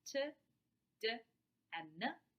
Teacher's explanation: T is a voiceless oral alveolar stop. D is a voiced oral alveolar stop. And N is a voiced nasal alveolar stop. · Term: alveolar stops